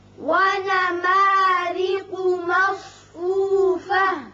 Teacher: را کے نیچے زیر ہے، اس کو باریک پڑھیں گے، قوف پر پڑھیں گے اور صاد بھی پر پڑھا جائے گا، یہاں ساکن ہو جائے گا ہاں وقف کی صورت میں۔